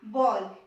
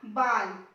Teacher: ये जो ध्वनि होती है ये होती है आ और ओ के बीच की। आ और ओ के बीच की, इसको आगत ध्वनि कह दिया जाता है।